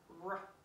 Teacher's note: Remember that R, cut it off, r. It's not, there's no U sound after that. It's like a motor sound.